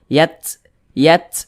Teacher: ketika melafazkannya itu ada suara desisan yang keluar daripada mulut kita karena huruf ta itu dia memiliki sifat hams Yat Yat nah